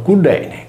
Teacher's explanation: Cillene, pronunciato Cudene, con la Y che traslittera la nostra U e la doppia L che assume il suono cacuminale D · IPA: [ɖ]